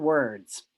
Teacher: really pushing out that vowel and it's elongated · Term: distortion